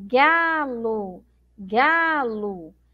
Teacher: eu pronuncio como se tivesse uma letra U mas na verdade eu tenho uma letra O